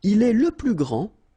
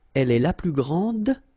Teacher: Okay, so phonetically what you can hear is that this first form here for the masculine, grand, so you don't pronounce the final D